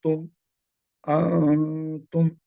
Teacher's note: نون ساکنہ اور تنوین کے جو رولز ہیں اس میں یہاں جو رول اپلائی ہو رہا ہے وہ ہے اخفا کا۔ نون ساکن کے بعد حروف اخفا میں سے تا آ رہا ہے، لہذا یہاں پر اخفا ہوگا، یعنی نون کو چھپائیں گے اور غنہ بھی ہوگا